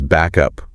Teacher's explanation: Instead of a clear stop back up, that final K sound just sort of attaches itself to up. So it becomes back up, one smooth sound. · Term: linking sounds